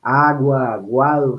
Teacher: La gama es un fonema que sería también expirante. Es expirante fricativo. Velar, pero es sonoro. Sonora. Expirante, velar, sonora.